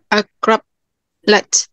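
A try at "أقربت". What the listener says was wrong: Akrobat, tidak ada lat. Akrobat latnya punya zalzala.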